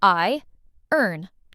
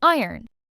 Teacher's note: We say iron. The O almost disappears.